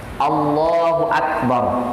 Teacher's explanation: jikalau ro sukun dibaca tafkhim itu tebal, tetapi jangan sampai hilang getaran ciri khas ro-nya. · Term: ro bergetar